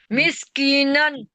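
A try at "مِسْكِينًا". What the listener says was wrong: मिस्कीनन नहीं, मिस्कीनन, की को खींचना है, या मद्दा है। दो जबर है नून के ऊपर।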